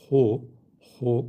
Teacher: H hu kalın bir harf. Boğaz harflerinin en üstünden çıkıyor.